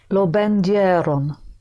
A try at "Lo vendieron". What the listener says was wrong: Don't give me two pushes. E and O, E and Yo.